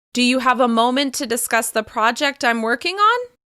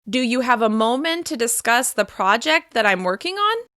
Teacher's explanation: As you can hear my pitch is rising at the end of that question to signal that I'm waiting for an answer. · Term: rising intonation